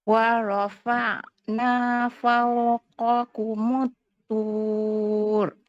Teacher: ain itu kena ada sifat bainiyah antara lepas dengan tertahan suara. Wa rafa'na, tak nak wa rafa'na habis kat situ kan.